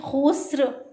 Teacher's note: खौ जो है ये हरूफ मुस्तालिया में से है, मोटे हरूफ में से है, इसलिए इसको मोटा करके पढ़ेंगे, पुर करके पढ़ेंगे